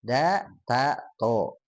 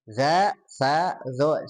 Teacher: bedanya kalau da, ta, to dia tidak nempel ke gigi langsung. Nah, kalau za, sa, zo nempel ya ke giginya langsung.